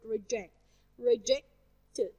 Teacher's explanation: I stress the second part of the word reject.